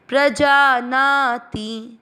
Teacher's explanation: प्र का मतलब हुआ प आधा और र पूरा PRA। प्रजा ना, जा और ना दोनों मात्राएं दीर्घ में आएगी। थोड़ा सा लंबा खींचते हुए ती की मात्रा को छोटा करना है।